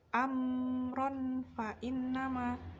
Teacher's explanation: terdapat bacaan ikhfa karena ada tanwin bertemu dengan huruf fa, maka dihukumi bacaan ikhfa atau menyamarkan.